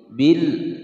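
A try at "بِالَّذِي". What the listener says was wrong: nah ini terlewat, al syamsiyah ditekan dimasukkan ya, dari huruf bi masuk ke huruf lam.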